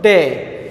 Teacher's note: Sound is shifting from A to I. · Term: diphthong